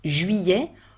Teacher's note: juillet with the closed U, the French U, Y sound, and open E